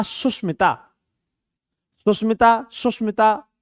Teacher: स तालव्य स का अर्थ क्या है कि यहां पर हमारा ये जो शलजम वाला स है इसका उच्चारण आप ताल से करते हैं